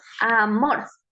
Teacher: palabra sí en este caso tenemos mor son dos sílabas entonces donde tenemos la mayor fuerza de voz es en mor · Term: sílaba tónica